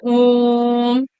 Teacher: इसमें 3 गुना समय लगता है, यानी ह्रस्व से ज्यादा दीर्घ में, दीर्घ से भी ज्यादा प्लुत स्वर में लगता है। इसलिए इसको त्रिमात्रिक वर्ण भी कहते हैं।